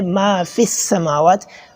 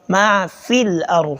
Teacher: we do not elongate the sound of the fa